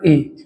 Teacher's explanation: कंठ की सहायता से और तालू की सहायता से जब बोला जाएगा तो उसे हम क्या बोल देंगे तो कंठ तालब कहेंगे